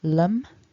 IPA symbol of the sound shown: ɒ